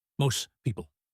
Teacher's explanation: Fast version, most people. The T is gone.